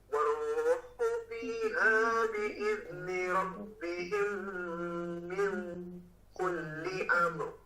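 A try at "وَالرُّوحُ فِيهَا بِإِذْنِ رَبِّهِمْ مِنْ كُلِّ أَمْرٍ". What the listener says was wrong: Dari ming-nya jangan terlalu tebal, jangan ming kulli. Nah, itu mendekati huruf qaf kalau tadi. Coba ikhfanya tebal, namun jangan terlalu belakang.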